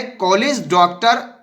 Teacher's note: ओ की ध्वनि बड़ा आ और ओ के बीच की होती है।